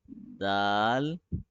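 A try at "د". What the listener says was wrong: It should be subtle. You must not press the tongue too hard at the hill. It should be more softer, gentler.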